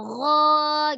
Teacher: dia isti'la, lidahnya terangkat pangkal lidahnya gho gitu kan, tapi dia lembut aja.